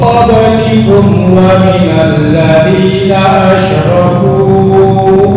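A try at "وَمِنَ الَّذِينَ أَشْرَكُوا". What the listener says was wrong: Kepanjangan. Ini ketika berhenti hanya 2 harokat. Ketika wasal baru 5 harokat. Kenapa? Karena mat bertemu dengan hamzah di lain kalimat yang disebut dengan jaiz munfasil. minal ladina asyraku. Buang panjang, 5 harokat.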